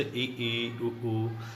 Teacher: जिसमें मुख लगभग बंद रहता है। बहुत ही कम मात्रा में खुलता है उसे समवृत स्वर कहते हैं।